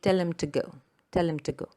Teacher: The grammatical words him and to are unstressed and have a weak form when pronounced inside a sentence.